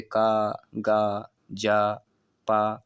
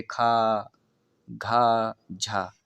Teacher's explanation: अल्प प्राण, जिसमें कम वायु प्रवाह से बोला जाता है और अधिक वायु प्रवाह से बोला जाता है वह महाप्राण।